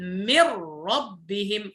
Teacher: ولا نقول من ربهم، هذا إظهار، إنما نقول من ربهم، فهنا ذهبت النون ودخلت في جسم الراء، فأصبحنا ننطق راء مشددة. أو قل أننا قلبنا النون راء وأدخلنا الراء في الراء فأصبحت راء واحدة مشددة. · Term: الإدغام بغير غنة